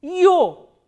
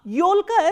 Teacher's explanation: yo is again a combination of e kratke, which is a soft consonant, and hard vowel o, yo. Yolka, yo, l, k, a.